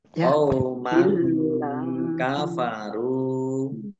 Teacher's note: Mim fathah mim fathah tanwin bertemu dengan huruf kaf, bacaan ikhfa, dibaca samar-samar